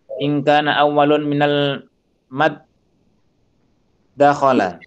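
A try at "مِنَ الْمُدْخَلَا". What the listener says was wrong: Bidbam laisa bil fath minal mudakhala.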